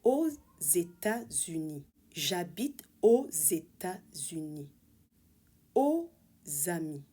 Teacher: Liaison with the Z sound also occur with words ending in the letter X, when followed by a word beginning with a vowel or a silent H.